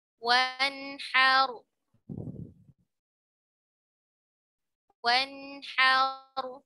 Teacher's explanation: membaca nun sakinahnya dengan jelas tanpa disertai dengan tambahan gunnah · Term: izhar halqi